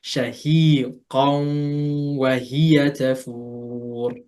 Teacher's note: So recite it from your, firstly merge it, recite it from your nose, and hold that nose sound for 2 harakat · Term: merging with a nasal sound